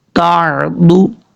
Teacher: ضاد حروف مستعلیہ میں سے ہے، پر پڑھا جائے گا